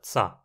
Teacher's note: a fricativa za do proto-nutiano era aqui uma africada, tsa